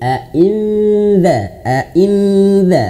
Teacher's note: Dza lidahnya sudah digigit